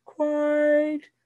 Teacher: it's a diphthong the i in the word quite is really ah followed by an e and i tell them hold the first half of the diphthong